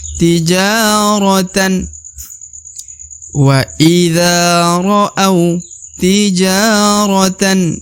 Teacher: dibaca Dua harakat karena di depan huruf ja terdapat Alif sehingga huruf Ja harus panjang dua harakat